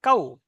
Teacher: ওয়াও লিনকে নরম আওয়াজে তাড়াতাড়ি পড়তে হয়, টান দেওয়া নিষেধ।